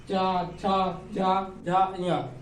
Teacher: चा, छा, जा, झा, ञ, ये तालु से आ रही है